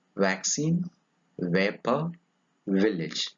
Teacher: V. It is a voiced labiodental fricative.